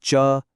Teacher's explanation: च, तालव्य, स्पर्श, अघोष और अल्पप्राण है।